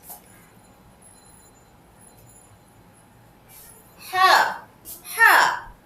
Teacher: হা উচ্চারিত হয় হলকের ঠিক মধ্যভাগ থেকে।